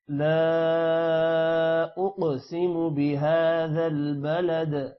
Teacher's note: لا 3 second لمبا کرنا ہے۔ اقسم قوف پر قلقلہ ہے اور قوف موٹا بھی ہوگا۔ بهذا ہا پر کھڑی زبر ہے، تھوڑا سا لمبا کریں گے، 1 الف کے برابر۔